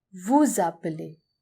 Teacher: You can notice the liaison again between vous and appeler.